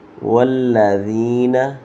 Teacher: لام مشدد ذال بغیر سیٹی کے